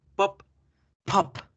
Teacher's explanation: ahora la garganta nunca vibra con la p